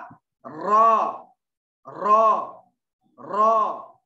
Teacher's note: नोके जबान की पीठ और ऊपर के दरमियानी दांतों के मसोड़ों से एक हर्फ रॉ निकलता है। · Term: जल्की